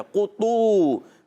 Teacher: قاف کو نہیں کھینچا، طا واو پیش تو کو کھینچا، قطو، تو حرکات نہیں کھینچی جاتی، عرف مدہ ایک الف لمبا کیا جاتا ہے، ٹھیک ہے۔ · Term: واو مدہ